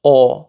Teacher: Or in some dialects, it might be Å. So you take the A sound and round your lips, Å. So that would be the more open pronunciation.